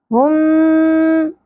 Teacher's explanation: پہ بھی ادغام ہوگا ادغام شفوی اس کو کہتے ہیں کیونکہ میم حروف شفوی میں سے ہے یہ وہ حرف جو ہونٹوں سے ادا ہوتا ہے ہم اور یہاں پہ غنہ بھی ہوگا ٹھیک ہے ادغام بھی